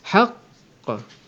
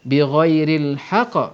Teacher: Haqqah, kerana ada dua qaf. Mati pertama senyap, mati kedua barulah ada qalqalahnya. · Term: qalqalah akbar